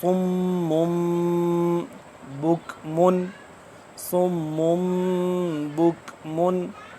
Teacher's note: इसकी आवाज को आप थोड़ी देर के लिए नाक में लेके जाके पढ़ना इफा कहलाता है